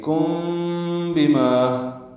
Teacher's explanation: کی وجہ سے اخفاء شفوی ہے، فَيُنَبِّئُكُم بِمَا، یہ کم بِمَا، میم اور با اکٹھے پڑھیں گے ملا کر، اخفاء ہوگا، ہونٹوں میں اخفاء ہے